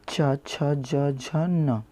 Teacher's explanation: च छ ज झ न, इनका कैसे होता है? तालु से।